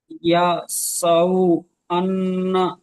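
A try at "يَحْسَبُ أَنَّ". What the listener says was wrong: ইয়াহসাবু, ইয়াহসাবু। ইয়াহসাবু না, ইয়া না, ইয়াহ, ইয়াহ বলছি আমি, আর আপনি ইয়া ইয়া করছেন। ইয়াহ, ইয়া হাসাবার ইয়াহসাবু। ইয়াহ, ইয়াহ, ইয়াহ পড়েন তো। সা- সাবু আন্না। ইয়াহসাবু আন্না।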